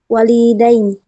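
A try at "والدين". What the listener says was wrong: Yang panjang wanya bukan linya. Walidain.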